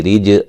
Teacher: اخ خوا کو موٹا ادا کریں گے، ریج را کو باریک جیم پہ قلقلہ